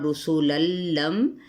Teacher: تنوین زبر کے بعد کیا ہے؟ لام آ رہا ہے، اس لیے غنہ نہیں کریں گے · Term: بغیر الغنہ